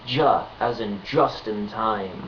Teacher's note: the voiced equivalent D and J together is pronounced ja as in just in time